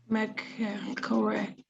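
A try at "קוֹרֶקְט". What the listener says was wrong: You said co, and I think before you said k, so it's just k. It's just that hard sound, not the co.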